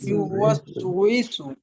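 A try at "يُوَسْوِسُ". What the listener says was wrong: ইউওয়াসওয়িসু। ইসু না, অনেকে কিন্তু এই যে একটা কমন একটা ভুল, সেটা হলো ইউওয়াস ইসু, যে ওয়াওয়ের নিচে যে জের আছে, ওয়াও জের যে উই হয়, এটাকে কিন্তু উই বলে না, অনেকে ই বলে।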